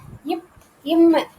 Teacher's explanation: இப் இம் இரண்டு மேரண்டு இந்த ரெண்டு மெய்ெழுத்துமே என்ன ஆகுதுன்னா இரு மெமெய்களும் மேல் உதடு கீழ் உதடு அதாவது ரெண்டு உதடு